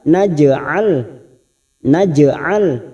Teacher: jim sukun qalqalah sugro, jangan lupa dipantulkan